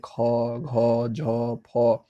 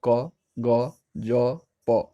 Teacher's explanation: महाप्राण जिसमें बोलने के बाद जो है सो हवा ज़्यादा निकलता है या हवा की ज़्यादा आवश्यकता होती है